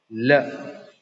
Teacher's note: Blocking the air passage and the air escapes, through the sides of, the tongue. Okay, so such sounds are called, lateral sound. So lateral sound is produced with a stricture of partial oral closure.